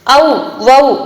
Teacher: தனித்து வர்ற இடத்துல இரண்டு மாத்திரை அளவு ஒலிக்குது